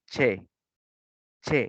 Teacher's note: los sordos te dice las cuerdas vocales están relajadas y no vibran · te vas a dar cuenta que tu cuerda vocal no está sonando no está vibrando